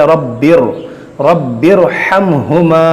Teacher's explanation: तो रा साकिन यहाँ पर है दूसरे कलमे में और ज़ेर यहाँ पर रब्बी में है। रा साकिन से पहले ज़ेर दूसरे कलमे में हो तो इस रा को भी मोटा पढ़ा जाता है